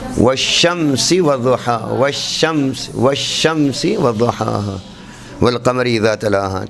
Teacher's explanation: شین میں ہم دیکھتے ہیں کہ یہ درمیان تالو سے زبان کا درمیان نہیں ٹکرا رہا بلکہ زبان کے کنارے اٹھ کے ٹکرا رہے ہیں